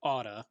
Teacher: notice i'm an american so my t's are soft so it sounds like otta